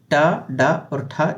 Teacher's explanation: जितने टा वर्ग के जो वर्ण हैं वो सभी मूर्धन्य वर्ण कहलाते हैं